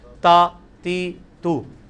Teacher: یہ تا یہ جتنی لینتھ ہے نا یہ آدھا الف ہے